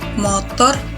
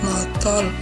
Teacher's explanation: Untuk penggantian fonem yaitu seperti fonem R menjadi L.